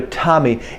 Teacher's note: it's the tip of my tongue making the stop